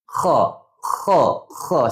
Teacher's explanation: Tak payah nak kahak punang. [ketawa] Kha ni bukan nak kahak tu kita nak desiran tu.